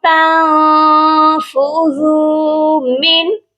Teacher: یہاں پر بھی ہم اپنی آواز کو ناک میں چھپائیں گے اور اس والے نون ساکن پر بھی آواز کو ناک میں چھپا کر پڑھیں گے۔ زال کو نرمی سے پڑھا جائے گا اور ایک الف کے برابر لمبا بھی کر کے پڑھیں گے، کیونکہ زال کے ساتھ واو مدہ ہے، واو ساکن سے پہلے پیش ہو تو واو مدہ ہوتا ہے۔